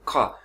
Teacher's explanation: पीछे से गले के अंदर से वो हलक से आवाज निकले, खा, हल्का सा ऐसे पुश होगा।